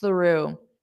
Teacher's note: To get that unvoiced th you need to put your tongue between your teeth and push out the air.